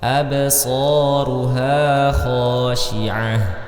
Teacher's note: di sini terdapat ba berharakat sukun maka kita Munculkan sifatnya salah satu sifatnya yaitu sifat Qalqalah